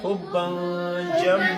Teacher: اوس دلته کې تنوین اواز مونږ پوزې ته ورو پټو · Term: غنه